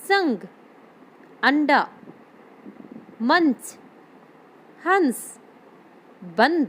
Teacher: बिंदी में जो ध्वनि निकल रही है जो उच्चारण हो रहा है वह नाक की सहायता से किया जा रहा है